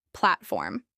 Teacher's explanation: This is pronounced with stress on the first syllable.